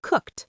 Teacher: The e d is almost invisible. It's just a little t at the end. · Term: t sound